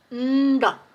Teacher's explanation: Nda is a retroflex sound with a combination of na and ta put together.